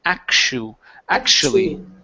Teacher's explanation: So here, when you have a T and a U together, in most cases, okay, that TU can either be pronounced like an SH or a CH. Here, we're going to pronounce it like an SH. It's actually.